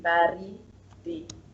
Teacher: There is ba, and then the pronunciation is again on ri, and then it goes down again to di